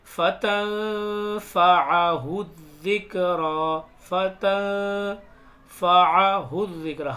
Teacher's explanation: یہاں پر غنہ ہوگا نون ساکن میں کیونکہ یہ اخفا ہوگا ، فتنفعہ الذکرى، فتنفعہ الذکرى، ہا کو یہاں دال میں ملائیں